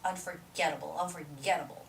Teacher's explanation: so unforgettable the stress goes on the syllable get